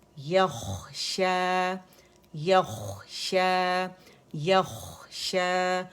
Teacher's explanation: یخشا رخاوہ بھی ہے، موٹا بھی ہے، ٹھیک ہے. زبان کی جڑ نرم تالو سے لگائیں گے، اور خواہ کا مخرج ادن الحلق ہے · اور خواہ میں رخاوہ ہے اور موٹا لیٹر بھی ہے